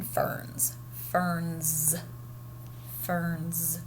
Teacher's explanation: think about how our z is sounding in ferns ferns ferns we feel it voiced